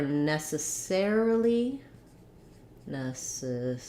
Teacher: for necessarily necessarily the stress changes to the air syllable